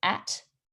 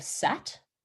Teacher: initial consonant deletion, where a child does not say the first sound in a word. For example, a child would say E instead of B, or at instead of sat.